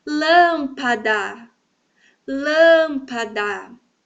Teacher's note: Essa primeira sílaba, então, é a tônica, a sílaba tônica.